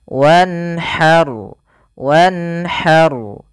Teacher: karena nun bertemu dengan huruf halq, yaitu huruf yang keluar dari tenggorokan, maka dia harus dibaca dengan jelas suara nunnya. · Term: izhar